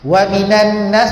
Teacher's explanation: Wa minan nas, apa tak nun sabdu tu? Jadi kena dengung.